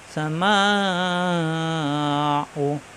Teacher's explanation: মিম আলিফ যাবর মা, মাদের হরফ এক আলিফ টান। এই মাদের হরফের বাম পাশে আসছে গোল হামজা, এই জন্য চার আলিফ টানতে হবে। পরে চার আলিফের সংকেত দেওয়াই আছে।